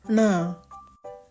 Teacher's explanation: the retroflex rolled tongue sound, which is n.